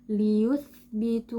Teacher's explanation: huruf tha dalam kondisi sukun, saat kita ucapkan suaranya akan mengalir dengan mudah. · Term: rakhawah